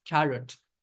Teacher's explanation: you are basically dropping the O sound completely